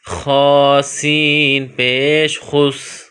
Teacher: سین کی ادائیگی میں سیٹی کی آواز پیدا کریں گے، خ سین پیش خس۔